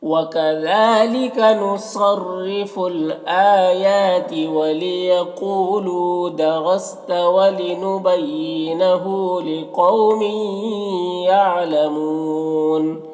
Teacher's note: یعلمون میں وقف کی صورت میں مد عارض وقفی ہوگا